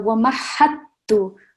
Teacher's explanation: we're holding the sound for 2 seconds, definitely, because we've got the shadda